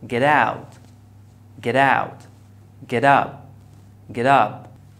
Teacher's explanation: it becomes one word so the teacher becomes between two vowels so we pronounce it as fast D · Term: American T